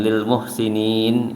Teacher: dipanjangkan lebih lah dari 2 harokat, antara 3-4 harokat sampai 6 boleh